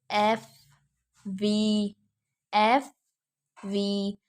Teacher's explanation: हमारा जो नीचे वाला होंठ है वो ऊपर अपर टीथ के साथ टच कर रहा है, तो हमारे एफ और वी साउंड जो है प्रोड्यूस हो रही है, तो इसमें हमारे अपर टीथ का रोल प्ले हो रहा है और हमारे लोअर लिप का। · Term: लेबियो डेंटल साउंड्स